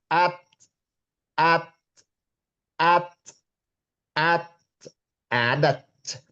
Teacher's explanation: Hames itu artinya ketika dia disukun, apa namanya, ada desis, desis keluar ya.